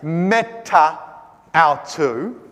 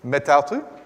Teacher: We just slur it together, and we put an apostrophe in there, and we shorten it off. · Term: elision